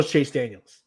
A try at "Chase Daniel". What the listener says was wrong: Chase Daniel. Chase Daniels. So there's no S. There's